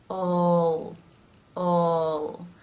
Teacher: The tongue tip moves into position, ol, and ends with the tip pressing against the roof of the mouth just behind the top teeth. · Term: dark L